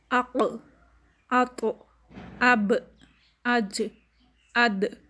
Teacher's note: اب یہ لیٹر ساکن ہو رہے ہیں تو ان میں قلقلہ ہو رہا ہے، ان کی آواز پلٹ کر آ رہی ہے